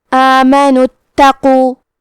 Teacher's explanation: کلمت اتقوا میں تا پہ تشدید ہے تو ہم 2 حرف کے برابر تا کو پڑھیں گے